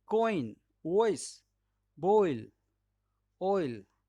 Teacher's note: तो आपको ओ और ई इन दोनों के कॉम्बिनेशन से बन रहा है चौथे नंबर का डिफ्थोंग